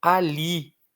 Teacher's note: É uma palavra oxítona, tá bom? Força no li, força na última.